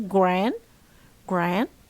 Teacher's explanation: it's a front front open vowel